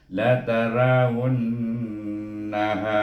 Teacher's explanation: ha baris di atas ha bertemu dengan alif, baca dengan mat asli 2 harakat.